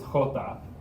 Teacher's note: the x and the j in spanish both make a sound not like an h because it's more coming from the back of your throat